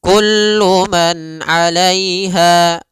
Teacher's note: nunnya tidak boleh ditahan, tidak boleh man 'alaiha, tapi kullu man 'alaiha langsung. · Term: izhar halqi